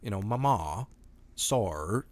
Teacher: you'll have the over enunciating of the R's before a consonant sound